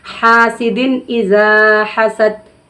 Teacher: حروف تنوین یا نون ساکن کے بعد حروف حلقی میں سے کوئی حرف اگر آ رہا ہے تو ہم نون کی آواز کو ظاہر کر کے بلا غنہ جلدی پڑھیں گے